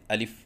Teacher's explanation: یعنی الف منہ کے خالی حصے سے ادا ہوتا ہے۔ جیسے کہ آپ کو اس نقشے میں نظر آ رہا ہے کہ جوف دہن کو یعنی منہ کے خالی حصے کو نیلے رنگ سے ظاہر کیا گیا ہے۔